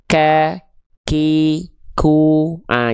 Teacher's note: Untuk huruf kaf itu dia hanya berupa perecikan saja. Kadar nafasnya bukan sampai betul-betul mengalir tapi hanya berupa percikan nafas saja. Sehingga pada praktiknya teman-teman melafalkan huruf kaf itu dia harus ada percikan nafasnya. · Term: hams